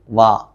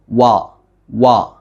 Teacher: 2 ചുണ്ടുകളും maximum മുന്നിലേക്ക് കൂർപ്പിച്ചുകൊണ്ട് വാ വാ, ഇതാണ് വാവിൻ്റെ മഖ്റജ്. · പല ആളുകളും വാ എന്ന് താഴെ ചുണ്ട് മേലെ മുൻപല്ലിൽ മുട്ടിച്ച് പറയാറുണ്ട്